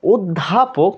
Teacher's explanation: অ এর উচ্চারণটা মূলত সংবৃত। কারণ আমাদের ঠোটটা কি গোলাকার হয়ে যাচ্ছে। যখন আমরা বলছি অধ্যাপক তখন ঠোটটা কি গোলাকার হয়ে যাচ্ছে। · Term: সংবৃত উচ্চারণ